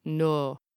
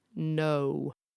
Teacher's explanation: in some accents, some words have monophthongs, a single flat vowel like no. And in other accents, that very same word will have a diphthong or a bendy vowel